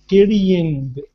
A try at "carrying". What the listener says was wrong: Mm-hmm.